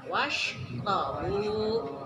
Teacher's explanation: Baris fathah sama doma. Di fathah sama doma itu harus dibaca tafhim. Tebal.